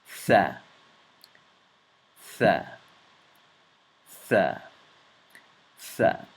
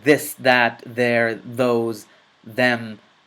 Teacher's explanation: the tongue must come out between your teeth and the exhalation of the air happens between the top of your teeth and your tongue